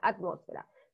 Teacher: Si ustedes se dan cuenta, la ra está en la última sílaba, fe en la penúltima sílaba, y ahí cae el acento, en la antepenúltima sílaba, que es mos. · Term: esdrújula